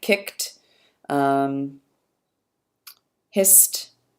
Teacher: we get the t voiceless after, no surprise, voiceless consonants